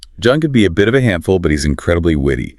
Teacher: You raise your pitch slightly on handful to show the contrast and drop it on witty to land the compliment. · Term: intonation